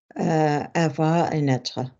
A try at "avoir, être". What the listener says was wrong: Can you pronounce them without vocal frying? Can you say them with the correct vowel?